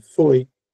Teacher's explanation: Porque o i é uma semivogal, vem junto com o. O é mais forte, até porque a pronúncia é com o mais forte.